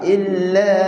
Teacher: Masa sebut illa, kita nak lam nipis, nak bunyi Arab. Tak nak bunyi illa.